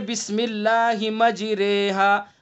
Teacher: हमें यहाँ ये समझना है कि ये मजरेहा की रा यानी जिस रा में इमाला किया जाए वो रा कैसी पढ़ी जाएगी? वो बारीक पढ़ी जाएगी।